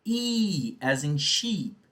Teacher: It is a front vowel, so your tongue moves to the front part of your mouth. Your tongue is high and your jaw is closed.